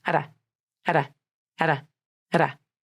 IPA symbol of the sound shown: ɾ